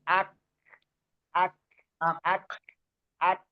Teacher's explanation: Jadi ada semacam ee hembusan napas sedikit keluar. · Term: hames